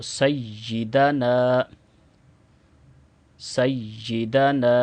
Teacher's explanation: نون کو بھی 2 سیکنڈ لمبا کریں گے، نون کے ساتھ الف مدہ ہے